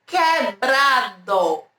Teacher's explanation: É como se esse U ele fosse mudo, sabe? E aí fica só o som do Q e do E.